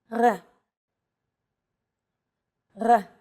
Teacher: This letter is pronounced differently than an English R. It's pronounced at the back of the throat instead of forward in the mouth. Listen to this letter.